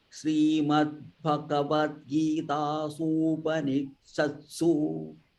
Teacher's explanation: ॐ तत्सदिति श्रीमद्भगवद्गीतासु उपनिषत्सु here there is, I think, su and u are combined, so it is dirgha. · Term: su dirgha